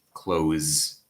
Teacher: a lingual fricative like a Z